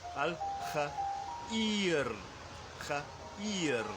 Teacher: with a short a vowel and then a long e vowel, ear into the a.